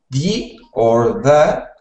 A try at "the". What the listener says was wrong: So when you were speaking, you were saying it like a D, like duh or D. Make sure that you are making that TH sound like you just made was perfect. So the. Or the.